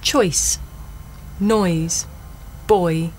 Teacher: a double vowel sound the shape the mouth makes changes from the beginning of the word to the end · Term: oi sound